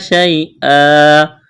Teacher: یا لین ہے، اس کو کھینچنا نہیں ہے